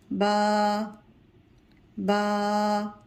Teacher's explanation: با ہونٹوں کے اندرونی تر والے حصے سے ادا ہوتا ہے